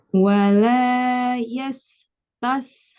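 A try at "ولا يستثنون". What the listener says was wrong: Yas tipis, tash tebal shinnya. Wala yastashnun.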